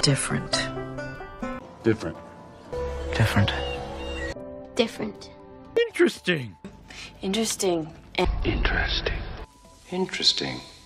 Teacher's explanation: 按照拼写来说呢，F 后面和 T 后面都应该有个 a 的音啊，可是我估计咱们大多数人都不读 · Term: 省音